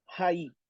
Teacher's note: Los diptongos, cuando llevan, aunque el acento, aunque el espíritu esté sobre la segunda vocal, si es en este caso espíritu áspero, ¿se debe pronunciar en dónde? En el principio.